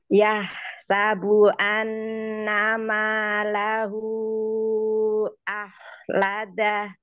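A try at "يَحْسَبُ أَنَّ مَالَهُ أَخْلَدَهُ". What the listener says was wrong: Coba ya, ya-nya jangan ya sa ke terlalu miring ya. Ya sabu, coba Umi. Ya sabu. Annama, enggak. Annama ma Bagus ya, coba sekarang huruf kho-nya. Ahlada, coba. Ahla ahlada. Jadi caranya rahangnya ini posisi lidah tengahnya dicekungkan coba. Ah ladah coba. Ah seperti itu ya. Ah ladah coba dari awal sempurnakan.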